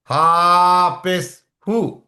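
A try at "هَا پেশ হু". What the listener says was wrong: হাটা একটু অল্প টান হবে।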